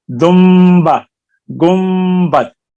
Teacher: پڑھا جاتا ہے نون کی جگہ پر میم، دمبا، گنبد۔